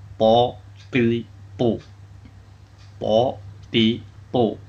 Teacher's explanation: punggung ujung lidah mengenai pangkal gigi seri atas sambil mengenai gusinya